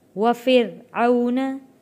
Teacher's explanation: یہاں پہ را کو موٹا نہیں پڑھیں گے کیونکہ را سے پہلے زیر آ گیا ہے